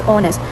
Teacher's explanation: The h is silent. It has two syllables.